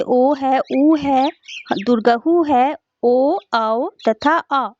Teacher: जीभ का पिछला भाग जो है समान स्थिति से उठता है, उसे पश्च स्वर कहा जाता है।